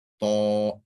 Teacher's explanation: It's ta, full mouth, heavy.